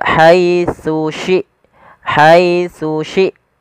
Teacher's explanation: huruf tsa yang pertama Ujung lidah kita menempelkan dengan gigi di atas kemudian syin dari tengah lidah kita